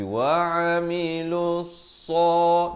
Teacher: Innal ladzina amanu wa 'amilus lam baris dhammah naik di atas sad di sini ya, bukan wa'amilu tapi wa'amilus sa. Di sini alif lam syamsiah ya, lamnya tidak dibunyikan.